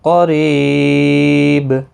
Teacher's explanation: وقف کی صورت میں با ساکن پڑھا جائے گا، اس پر قلقلہ بھی ہوگا ، را زیر کی وجہ سے باریک · کا قاف آیا، اخفا حقیقی ہوگا، گنہ کے ساتھ پڑھیں گے، قاف مستعلیہ ہے پر پڑھا جائے گا ، ری یا مدہ ہے ایک الف کی مقدار کے برابر